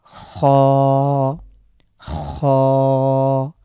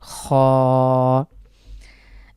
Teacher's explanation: এই খ লেটারটি আমাদের কণ্ঠনালীর শেষখান থেকে উচ্চারিত হয়